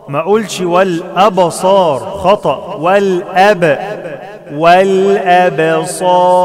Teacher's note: الباء مقلقلة ومرققة